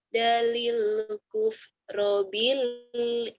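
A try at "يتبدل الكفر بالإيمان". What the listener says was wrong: Bilnya jangan ditahan. Idhar. Alif lam komariah itu idhar komariah. Idhar komariah. Yatabadalil kufra bil iman. Karena berhenti jadi panjang. Jadi mad ari disukun sifatnya sementara.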